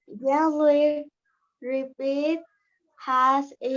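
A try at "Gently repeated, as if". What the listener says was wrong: Oh, you didn't read the ED? Again, same mistake. Repeat it.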